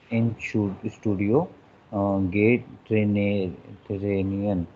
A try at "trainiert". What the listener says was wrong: trainiert, not gay trainier, trainiert.